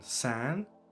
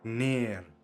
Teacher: Most of these nasal vowels exist as long and short forms, as we have seen before with the nasal variant, which can be either short like in san or also long as in ner